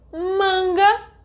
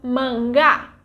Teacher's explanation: in the first word the stronger syllable is ma and in the second one is ga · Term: syllable tônica